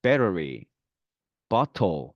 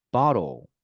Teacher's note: 그래서 앞에 있는 단어 take, table 이런 경우에는 T 발음이 되겠지만 모음과 모음 사이 혹은 모음과 L, 유음 사이에는 T 발음이 네, 르 발음이 됩니다. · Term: 플래핑